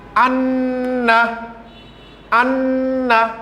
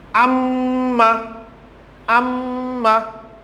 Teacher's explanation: If you utter this word anna, then the sound of nun will come from the nose. And then amma, amma. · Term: gunna